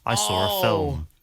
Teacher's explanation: pretty wild is something called the intrusive r that means that people sometimes add an R sound to a word that doesn't actually have one if it's followed by a vowel in the next word